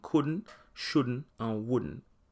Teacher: the words couldn't shouldn't and wouldn't loses its T